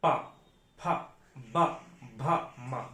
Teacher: ओष्ठ व्यंजन हम दोनों ओंठे बंद करके बोलते हैं। अगर ओष्ठ व्यंजन कोई है और उसे बोलेंगे तो दोनों ओंठे आप आपस में सटेंगे जरूर।